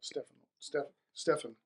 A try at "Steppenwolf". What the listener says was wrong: No, it's Steppen, 2 P's.